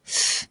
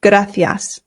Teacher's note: here in Spain, they pronounce the C's with a TH sound. Th.